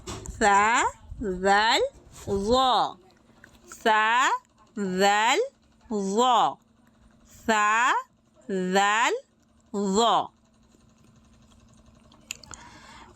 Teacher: জিহ্বার আগা সামনের ওপরের 2 দাঁতের কিনারার সাথে লাগিয়ে উচ্চারিত হবে সা জাল জ।